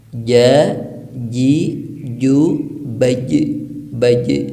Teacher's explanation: huruf jim itu makhrajnya yaitu tengah lidah menyentuh ke langit-langit, bukan ujung lidah. Jadi kalau ujung lidah bunyinya ja, ji, ju, baj.